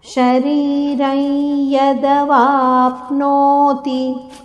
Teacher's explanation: ಶರೀರೈ ಶರೀರಂ ಅಲ್ಲ ಅನುನಾಸಿಕ ಯದ ಉಚ್ಚಾರಣೆ ಬೇಕು